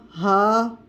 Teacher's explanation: پھر اس کے بعد ہا کا مخرج، یہ حلق کا آخری حصہ ہے، یہاں سے ادا ہوگا ہا. ہا کی ادائیگی سینے کی جانب ہوگی، سینے کی جانب سے ہا کی ادائیگی ہوگی اور آواز میں تھوڑا سا بھاری پن آئے گا.